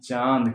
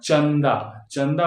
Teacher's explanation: जैसे दिया हुआ है चांद और चंदा तो चांद है ना चांद खींच के आता है चांद पूरी तरह से नासिका से आवाज आती है और चंदा चंदा बोलते तो ऐसा लगता है कुछ जंप किया